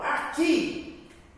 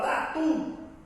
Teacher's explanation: Perceba que quando eu falo aqui, sílaba tônica é o I. Quando eu falo Tatu, a sílaba tônica é o U. Então, são oxítonas terminadas em I e U.